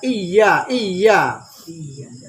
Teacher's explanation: huruf yang makhrajnya pertengahan langit-langit, pertengahan lidah dengan langit-langit. Maka di saat membaca harus kena tengah langit-langit dengan tengah lidah dengan langit.